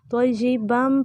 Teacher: با کو میم میں داخل کر کے پڑھنا ہے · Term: ادغام